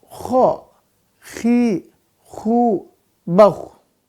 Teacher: untuk kho, makhraj tenggorokan atas, sifatnya dia ada hamas, rokhawah, isti'la, infitah, dan terakhir adalah ismat.